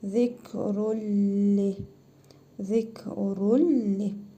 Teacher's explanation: İdğam-ı bilə qunnə qaydasına görə tənvindəki nun hərfini tələffüz etmirik. Ləm hərfini isə şəddəli oxuyuruq.